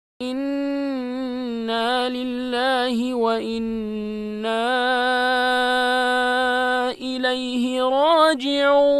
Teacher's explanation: Now after harf mad, Hamza has appeared in another word. So two words are there. So it means this is going to be prolonged up to 4 harakat.